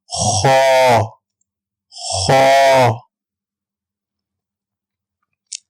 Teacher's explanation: خا حلق کے اوپر والے حصے سے ہم خا کو ادا کریں گے